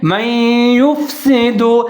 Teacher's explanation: یہاں پر نون حذف ہو جائے گا، نون کو ہم نہیں پڑھیں گے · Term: غنہ